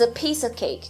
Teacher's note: Então, a, artigo baixo, piece, palavra de conteúdo forte, of, que é a preposição, se torna um schwa aqui, você nem precisa falar of, você pode falar a, e cake volta a ser acentuado.